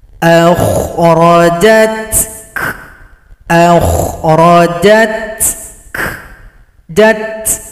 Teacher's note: Kebetulan di sini ada dua huruf hamas, huruf ta dan huruf kaf. Maka kedua-duanya dibunyikan sifat hamasnya. Ada bunyi nafas atau bunyi angin.